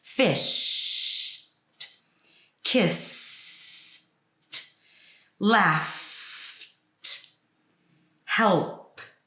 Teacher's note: if at the end of the word, there's no voice, then there's also no voice on the ed, which in this case is just T